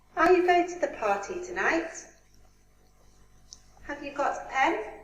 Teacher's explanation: This is yes/no question, so we have a rising intonation in the end. The second sentence is the same.